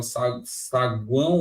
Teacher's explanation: esse o aqui ele tá com som de u como ele tá com som de um ele tá fraco então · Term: semivogal